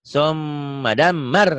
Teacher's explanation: M-nya ditahan, A-nya dilepas.